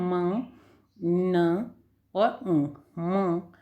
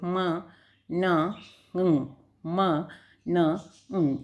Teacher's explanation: तो इसमें तीन ही हैं, आप बोलेंगे ना म, न और म, यानी नाक के अंदर से आवाज़ बाहर आ रही है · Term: नेजल